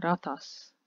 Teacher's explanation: The “t” is not long in the end